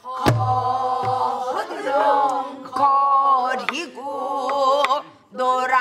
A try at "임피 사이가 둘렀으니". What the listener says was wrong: 청이 흔들리면 안 되죠. 그 기본음, 중심음이 흔들리고 오락가락하면 안 돼요. 그 음은 쭉 갖고 가는 거예요. 변하지 않아야지. 다 그 음이잖아.